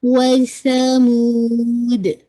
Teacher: آپ سا کا مخرج نکالے گا. سین کا ساؤنڈ نہیں ہے